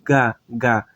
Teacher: ele vai ter um som de um GH aquele som mais Brando mais suave